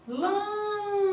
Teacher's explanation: A sílaba tônica, lam. Ela é a antepenúltima, ó. Última, penúltima, antepenúltima.